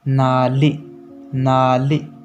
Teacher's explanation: तो त थ द ध में जब जीभ में दांत में जीभ सटी, तो इसलिए हमें न बोलते वक्त भी जीभ को दांत में ही सटाना है और नाक से आवाज आएगी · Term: दंत वर्ण